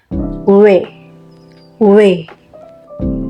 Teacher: Yang pertama, semivokal bilabial. Semivokal ini terjadi jika artikulator aktifnya bibir bawah dan artikulator pasifnya bibir atas. Bunyi yang dihasilkan W.